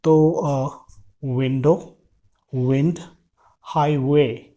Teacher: Okay. लेकिन जब दूसरा व आता है जो कि W से होता है, तो हमको अपने होठों को गोल करना है और फिर उसके बाद फिर उस तरीके से हमको वहाँ पर उस साउंड को प्रोड्यूस करना है।